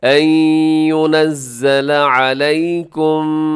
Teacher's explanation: آگے ان ينزل علیکم، ان ينزل، یہاں نون ساکن کے بعد ينزل کے شروع میں یا ہے تو نون ساکن کے بعد یا آ گیا، تو نون ساکن کے بعد جب یا آتا ہے تو وہاں پر ادغام ہوتا ہے کیونکہ یا حروف یرملون میں شامل ہے۔